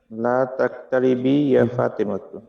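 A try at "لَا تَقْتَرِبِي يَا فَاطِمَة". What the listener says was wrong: জি, মাশাআল্লাহ।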